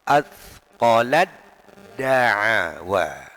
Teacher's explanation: Ketika huruf ta sukun berhadapan dengan dal, makhrajnya sama, sifatnya berbeda, maka taknya diidghamkan, dimasukkan ke dalam huruf dal, sehingga dibaca seakan-akan tasydid atau syiddah.